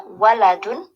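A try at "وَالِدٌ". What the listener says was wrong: Yes, you have to say walidun, right? You have to make a long sound for alif, walid.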